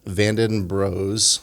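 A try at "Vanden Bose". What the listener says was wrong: Not Bros, but Bose.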